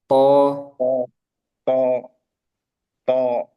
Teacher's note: di to jangan ada udara